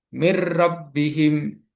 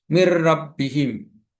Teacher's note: Mir rabbihim. Jadi nunnya seakan-akan tidak ada tapi melebur dengan huruf ro. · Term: idgham bila gunah, idgham bila gunnah